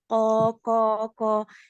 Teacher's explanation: huruful kof itu nggak syiddah, nggak kuat gitu loh. Jadi dia jadi ada hembusan nafas, nggak jaher, nggak jelas gitu.